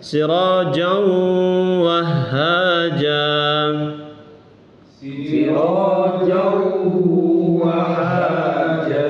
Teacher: Masukkan ini ke wawu, dileburkan. N-nya itu hilang, lalu wawunya ditasdid. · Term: idgham